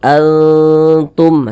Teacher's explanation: kadar ikhfanya itu dia tinggi kadar samarnya itu dia tinggi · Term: ikhfa Hakiki aqrob